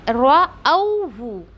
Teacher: रअौहु, रऊहु ऐसा नहीं पढ़ना है, राहु ऐसा भी नहीं पढ़ना है, क्यों, हम हमज़ा को वाव में लीन करते हुए रअौहु ऐसे पढ़ेंगे